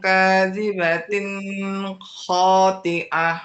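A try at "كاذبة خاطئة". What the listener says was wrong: Nah, ini kelamaan juga. Kho, kelamaan ya. Kadzibatin khoti'ah.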